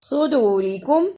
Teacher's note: قل صدورکم، اسے صدورکم نہیں پڑھنا، صاد کی جگہ پہ سین کی آواز نہیں آنی چاہیے